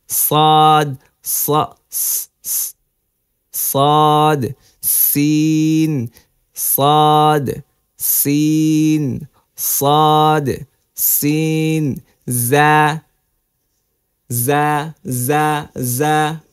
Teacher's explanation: জিহবার আগা সামনের নিচের দুই দাঁতের পেট ও আগার সঙ্গে লাগিয়ে উচ্চারিত হয় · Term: 12 নম্বর মাখরাজ